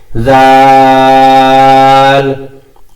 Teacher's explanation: আপনার জিহ্বার আগা উপরের দাঁতের কিনারার সাথে লেগে জাল এই হরফ উচ্চারিত হবে